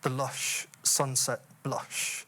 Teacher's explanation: the repeated vowel, which, at least in my case, seems to arise somewhere at the back of the throat, and then the shush right at the front of the mouth. So the word seems to travel from the back of my mouth to the front of my mouth, and then to get released, as it were, by the rhyme, the lush sunset blush.